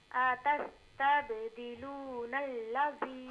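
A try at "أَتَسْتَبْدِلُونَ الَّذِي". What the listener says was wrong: حمزہ کو بالکل بھی نہ کھینچیں. اتستبدلون الذی.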